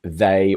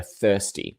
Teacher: So we've got the voiced one, and we've got thirsty, the voiceless one.